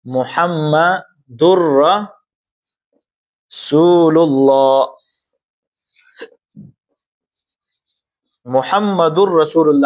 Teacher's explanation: یہاں پر ادغام ہوگا لیکن بغیر غننے کے۔ میں نے آپ کو بتایا کہ را اور لام میں را حروف یرملون میں سے ہے لیکن یہاں پر جب ادغام ہم کریں گے تو بغیر غننے کا کریں گے۔ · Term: ادغام بغیر غننے